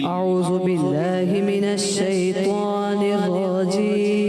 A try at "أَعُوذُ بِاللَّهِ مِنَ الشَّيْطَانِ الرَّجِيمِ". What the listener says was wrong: پیارے بچے زال کی ادائیگی. اعوذ، دوبارہ پڑھیں. اگر آپ پڑھیں گے اعوذ تو کیا ہو جائے گا؟ زا ہو جائے گا. ہم نے پڑھنا ہے اعوذ ذال اعوذ.